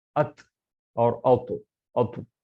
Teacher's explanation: زبان کا جو اوپری حصہ ہے آپ کو اوپر کے تالو کی طرف جا کے لگے گا